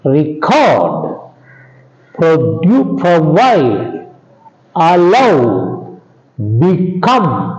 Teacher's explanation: These are all two syllable verbs. All these two syllable verbs take stress on the second syllable.